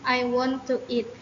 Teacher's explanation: If you want to emphasize eat, the voice is raised when mentioning the word. Extending words, emphasized words are pronounced longer than other words. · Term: sentence stress